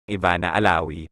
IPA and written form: ɪˈbanɐ ɐˈlaʊɪ (Ivana Alawi)